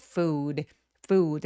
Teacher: food는 우 소리가 입술 쭉 내밀어서 길게 장음으로 소리 날 수 있도록 food 해 주세요.